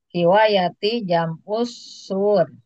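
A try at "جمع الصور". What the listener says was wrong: Ada wawunya di fathah. Wawunya di fathah. bukan sur.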